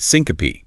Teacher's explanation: Pronounced s-i-n-co-pe, three syllables. The e at the end is not silent.